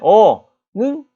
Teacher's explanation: 어는 어중간하게 입이 벌어져요. 중모음입니다.